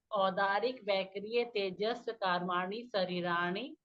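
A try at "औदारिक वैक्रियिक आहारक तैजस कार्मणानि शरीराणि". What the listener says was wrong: आहारक कहाँ गया? आहारक कहाँ गया?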